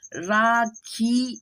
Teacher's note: अनुनासिक की मात्रा इसलिए बोलती है जिससे की हम नाक से उसको उच्चारण करते हैं